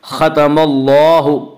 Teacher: اللہ کے لام سے پہلے زبر ہے اس لیے اللہ کے لام کو پر پڑھیں گے۔ ختم اللہ، اور یہاں پہ مد اصلی ہوگا، اللہ میں مد اصلی ہوگا۔